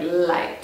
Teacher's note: in some dialects, N can also sound like L.